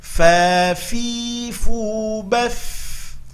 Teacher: Mengalir, kita latih fa fi fu baf. Mengalir, ada sifat hamas pada huruf fa, ya.